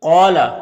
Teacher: قوف یہ حروف مستعلیہ میں سے ہے تو اسے پر پڑھیں گے، اور یہاں پر الف سے پہلے قوف کے اوپر زبر ہے تو الف مدہ ہوگا، اسے ایک الف کے برابر کھینچ کر پڑھیں گے